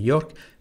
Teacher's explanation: lo pronunciamos una mezcla de francés e inglés. La R es francesa, así de York, pero se dice New York.